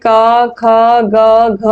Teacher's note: कंठ क वर्ग का रहता है